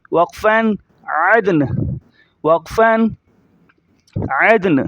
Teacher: نون کی دونوں زیروں کو ظاہر نہیں کریں گے جب ہم اسٹاپ کریں گے